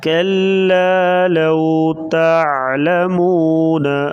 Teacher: کلا قاف کو باریک پڑھیں گے اور لام کے ساتھ جو الف ہے الف مدہ ہے. لو کے ساتھ واو ہے یہ واو لین ہے. اس کو نرمی کے ساتھ پڑھیں گے.